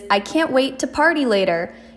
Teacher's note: Hear how it goes uphill because of the excitement in your voice? That is a rising type of sentence. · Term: rising pitch